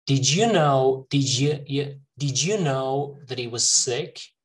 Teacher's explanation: the words that i would not stress are you that and was